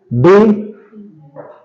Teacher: आप टंग को मरोड़ के ऊपर के दांतों के साथ ऊपर तालू के साथ टच करते हैं